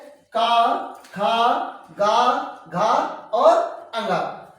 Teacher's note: क वर्ग को जो बोलते हैं हम कंठ से बोलते हैं